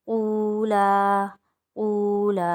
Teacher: یہاں پر قو پہ واو مدہ بن رہا ہے، ایک الف کی مقدار کھینچیں گے، اور لام الف پہ الف مدہ بن رہا ہے کیونکہ الف خالی اور اس سے پہلے زبر ہے تو یہاں پر بھی ایک الف کی مقدار کھینچیں گے۔